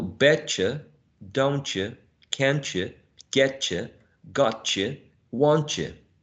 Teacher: It's not just the reduction going on here, but also coalescence, right? Which could be coalescence with the affricate ch, or with the voiced affricate, right?